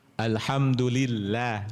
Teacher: Tipis ya Allahnya tipis lillah karena didahului oleh kasrah.